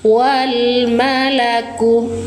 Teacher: Alif lam qamariah. Baca jelas lam sukunnya.